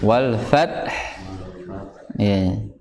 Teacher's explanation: makhrojnya atau tempat keluarnya adalah di bagian bibir yang bawah bibir bawah yang bertemu dengan dua gigi seri atas